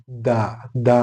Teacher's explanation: ഹ ഉച്ചരിക്കേണ്ടത് മറ്റൊരു അക്ഷരമാണ് ദാല് ഈ ദാല് ഉച്ചരിക്കാനുള്ള മാർഗം എന്ന് പറഞ്ഞാൽ നാവിന്റെ മുൻഭാഗം പല്ലിന്റെ മുൻപല്ലുകളുടെ അടിയിൽ വെച്ചിട്ട് എടുക്കുമ്പോഴാണ് ദ ദ ഉണ്ടാകുന്നത്